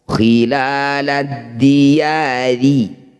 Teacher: Nah, ketika dibaca terus, ketika berharokat kasroh, maka ro ini jadi tarkik atau tipis. Tempelkan ujung lidah di pangkal gigi seri atas.